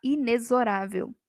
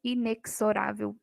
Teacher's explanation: Olha só o x aqui tem som de z o correto é falar inexorável e não inexorável não tem som